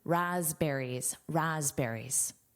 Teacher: And did you notice that S is voiced? So it actually sounds like a Z.